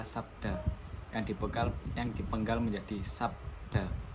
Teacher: Jeda di antara konsonan B dan D atau K dan M inilah yang menandakan bahwa mereka adalah sebuah deretan, bukan satu kesatuan bunyi. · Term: deretan konsonan